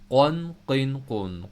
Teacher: کاف کی جگہ سے تھوڑا سا نیچے جائیں گے تو قوف کی آواز آئے گی، جہاں پر ناک میں ہماری سانس جاتی ہے، وہ جو گوشت کا ٹکڑا ہے وہ والی جگہ